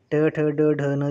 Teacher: ट ठ ड ढ न जो है वो मूर्धा उच्चारण स्थान है इनका, मूर्धन्य वर्ण नाम है इनका।